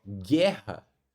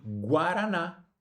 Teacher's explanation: o U não tem som. A gente não fala guerra. diferente de guaraná em que o U já tem som.